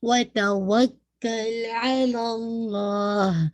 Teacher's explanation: لام جلالہ ہیوی رکھیے گا